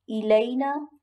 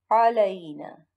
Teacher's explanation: ایک تو حرکت کا فرق ہے، الینا کے نیچے زیر ہے، وہ زیر سے سٹارٹ ہو رہی ہے، علینا پر زبر ہے۔ دوسری بات، الف منہ کے خالی حصے سے ادا ہوتا ہے اور عین جو ہے یہ حلق سے ادا ہوتا ہے